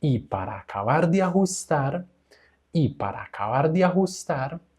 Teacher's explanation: vamos a hacer una melodía como ascendente